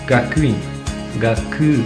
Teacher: tu entends le son U. Ça sort du fond de la gorge.